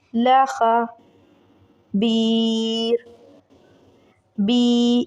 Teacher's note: اس کو کھینچیں گے 3 سیکنڈ کے لیے، یا مدہ ہے